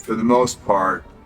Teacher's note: This word is usually reduced to a simple for. And also when the next word begins with a consonant, the R sound is dropped.